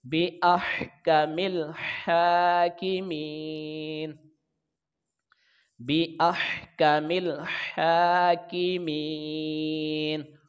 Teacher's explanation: کاف کے نیچے زیر ہے تو یہ کاف باریک پڑھا جائے گا اور جلدی بھی پڑھا جائے گا. میم کے نیچے زیر آگے یا ساکن ہے تو اس کی لمبائی ایک الف کے برابر ہوگی, اس کو یائے مدہ کہتے ہیں. · نون پر وقف کریں گے, وقف کی صورت میں نون کے اوپر زبر نہیں پڑھیں گے, نون ساکن ہو جائے گا